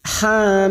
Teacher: bertemu taskid maka cara membacanya cukup ha dua harakat ha mi mim kita panjangkan enam harakat dan ujungnya bibir kita tertutup mim sudah tidak ada dengungan lagi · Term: mad lazim Harfi mukofaf